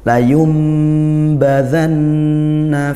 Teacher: Nun bertasydid dibaca dengung